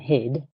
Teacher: Okay, so in this minimal pair, word like hit and hid, in the second word, the final consonant is voiced, and that makes the vowel sound a little bit longer